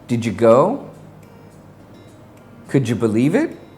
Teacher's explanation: when the final D is combined with the Y, it is pronounced J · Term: J sound